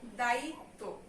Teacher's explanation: তয়ের সঙ্গে ব ফলা থাকলে তয়ের ডাবল উচ্চারণ হবে